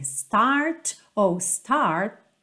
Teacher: esses T's finais não tem a necessidade de aparecer muito